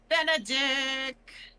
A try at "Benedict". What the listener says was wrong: Please pronounce the T. No, you didn't.